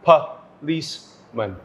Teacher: the schwa is in the first syllable so just mark this and it's also in the third syllable